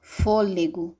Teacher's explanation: a vogal fechada, eu falo apenas com a boca entreaberta, como a palavra fôlego